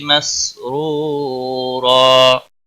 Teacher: را کو پیش کی وجہ سے پر پڑھیں گے، واو مدہ ہے، ایک الف کے برابر کھینچ کر پڑھیں گے